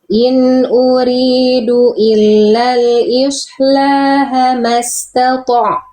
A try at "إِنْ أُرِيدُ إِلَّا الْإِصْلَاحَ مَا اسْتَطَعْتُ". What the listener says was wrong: Oke, shortnya tebalkan, kurang tebal. H-nya kurang bunyi. H kecilnya. Ya kurang duduk bunyinya ya. In uridu illal islaha mastata'at.